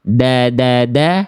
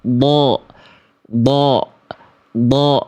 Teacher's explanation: Karena huruf dal ini tipis, maka pangkal lidahnya terhampar atau tidak naik. · Vokal a murni tipis. Da. Huruf dod, vokal a gemuk.